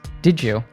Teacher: we saw how D plus Y usually morphs into a J sound